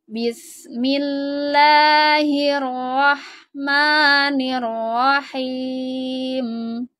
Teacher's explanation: Nah, di sini lafadz lamnya harus dibaca tipis ya, karena sebelumnya ada huruf berharokat kasroh. Maka lafadz lahnya ini jangan ditebalkan, tapi tipis aja